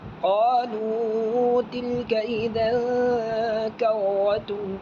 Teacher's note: دو زبر کی تنوین ناک میں جائے گی، اس کو بولتے ہیں اخفا حقیقی